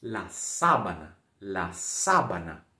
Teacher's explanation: A sílaba tônica é no comecinho.